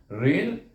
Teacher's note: Ra iaitu mahrasnya lidah kita bertentangan dengan gusi di atas gigi kaca.